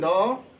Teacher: ध्यान दीजिए, उत्क्षिप्त व्यंजन ढ और ड़ होता है।